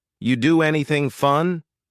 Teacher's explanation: we link together doing because we're going to drop the G it ends with the sound n